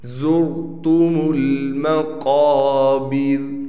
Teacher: क़ाफ को हम मोटा पढ़ेंगे और बा और रा ये दोनों बिल्कुल बारीक पढ़े जाएंगे।